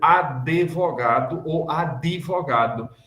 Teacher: Em português do Brasil, não no português de Portugal, no português daqui. A gente acrescenta uma vogal ali depois do D, fazendo advogado ou advogado, porque não é do espírito de nossa língua essas sílabas travadas, a não ser que esse travado seja um S.